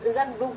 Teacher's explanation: ke di sini berubah menjadi ge karena bunyi setelahnya, yaitu bunyi de. Ini kita bisa rasakan begini, kalau kita melafalkan bunyi zagduk itu memang agak susah. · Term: asimilasi regresif